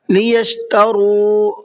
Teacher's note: را کو کھینچ کر کے پڑھنا ہے اور منہ بھر کے پڑھنا ہے